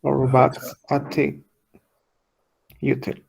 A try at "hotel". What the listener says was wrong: Hotel. Ha, with an H. Hotel.